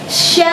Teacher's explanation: Sya ini salah satu huruf mat karena ada alif yang tidak berbaris, ya disatukan huruf sya. Sya ketemu dengan alif tidak berbaris yaitu mat asli ya, dipanjangkan 2 harkah.